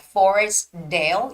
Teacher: You don't necessarily have to make the T sound.